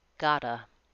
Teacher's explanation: To is reduced to ta, and the T on got links and becomes more of a D. Gotta. That has an American T.